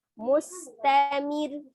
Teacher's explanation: Ada penekanan di huruf ro walaupun dibacanya dia tipis ya. Tapi dia penekanan karena terakhirnya itu adalah tasdid ya, tetap disukunkan tapi ditekan.